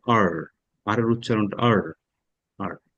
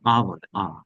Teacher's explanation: আমেরিকানরা আর, আর এর উচ্চারণ আর, আর। আর ব্রিটিশরা আর উচ্চারণ করে না, আ বলে